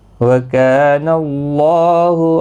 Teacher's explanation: وَكَانَ اللَّهُ کا الف مدہ ہے، 1 الف کی مقدار کے برابر کھینچیں گے